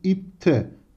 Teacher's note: Bakın normalde D ekidir. Sertleşerek T olduğunu görüyoruz. Dolayısıyla arkadaşlar burada benzeşme yani sertleşme vardır. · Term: ünsüz sertleşmesi